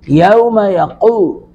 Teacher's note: यौम यक़ूमुर-रूहु वल मलाइकतु, लाम पर मद्दे मुत्तसिल 3 अलिफ खींचेंगे। यौम यक़ू, क़ाफ को पुर करके पढ़ेंगे